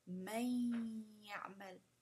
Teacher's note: It's like you just drop the noon. And it's like you put on the ya'mal, it's like you're putting a shadda on the ya. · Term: idgham